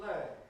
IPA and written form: pleɪ (play)